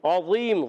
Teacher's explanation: गुन्ना नहीं करेंगे, इज़हार हल्की होगा। और अज़ीम में आइन अदा होता है हलक के दरमियान वाले हिस्से से